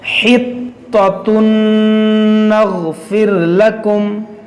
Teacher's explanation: تنوین کے بعد نون حروف یرملون ہے, تو یہاں پر ادغام کریں گے, یعنی یہاں پر غنہ کریں گے